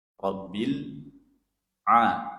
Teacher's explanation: Diusahakan pengucapannya itu a di mana itu ain? di mana ini tenggorokan. Tenggorokan bagian tengah ya.